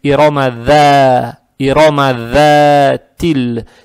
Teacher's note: Фатху тянем за счет алифа без огласовок. Тянем два раза. Это мад табиий.